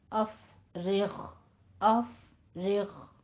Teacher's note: غین ادنا حلق میں لے جا کے سٹاپ کرنا ہے